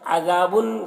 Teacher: ज़ाल को बारीक पढ़ेंगे और यहाँ पर अलिफ मद्दा है और बुन में इज़हार हो रहा है।